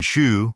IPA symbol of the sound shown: ʃ